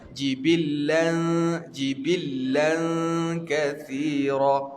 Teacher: lidah duduk di antara gigi atas dan gigi bawah. Memang dia kena dengung ke arah bunyi huruf nun, tetapi bukan makna dia kena sebut huruf nun.